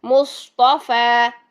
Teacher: صاد کے لیے زبان کا درمیان بھی اٹھایا، جڑ بھی اٹھائی، پھر طا کے لیے زبان کا درمیان بھی اٹھایا، جڑ بھی اٹھائی، پھر فا کے لیے دونوں چیزیں نیچے کر دیں، ٹھیک ہے، فا باریک کر دیا، مصطفیٰ، ٹھیک ہے۔